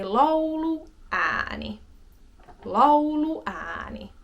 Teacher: this is an yhdyssana, so two words together, so there will be that small pause in between both words